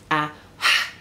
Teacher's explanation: a h in the back of your mouth which is a friction sound